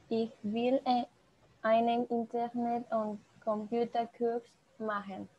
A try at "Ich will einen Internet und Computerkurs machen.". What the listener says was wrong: Ja, genau.